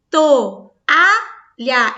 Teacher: Eu pronuncio o O, eu pronuncio o A. Não há apoio entre eles, pelo contrário. Cada uma delas tem um som forte. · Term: hiato